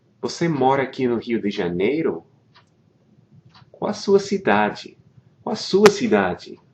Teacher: One thing to notice is with these questions is the intonation, right? Your voice trails up, right? At the end, você mora aqui no Rio de Janeiro?